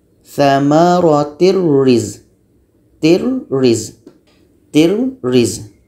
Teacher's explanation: Ini tanwin bertemu dengan roh. Tanwin hilang, masuk kepada bunyi roh.